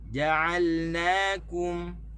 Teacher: Tekan di na, tekan di kaf. Okey, di jim tak boleh tekan.